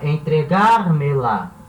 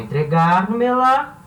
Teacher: Agora, a sílaba tônica continua a mesma. Gar. Só que ela não é mais a última.